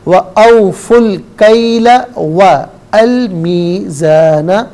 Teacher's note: ملا کر پڑھنے کی صورت میں واو کو لام کے ساتھ ملائیں گے، درمیان سے الف یعنی حمزہ کو حذف کیا جائے گا